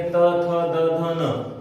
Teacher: अगर आप बोल के देखेंगे त थ द ध न, तो जबान जो है हमारी, जिह्वा जो है वो दांतों से स्पर्श करती है, इस कारण से त वर्ग पूरा आएगा।